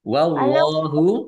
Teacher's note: Allahnya dibaca tebal karena harakat di depannya fathah lam fathah berdiri thobii wasiun wha alif juga mad [Musik] dibaca panjang masing-masing dua harakat.